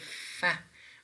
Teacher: When we say fa, we are pressing the lower lip against the upper teeth. Right, so fa is a kind of voiceless labiodental fricative.